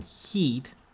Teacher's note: if you have an e like in heat that has that is very fronted this is gonna have a very high f2 value two hundred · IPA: /i/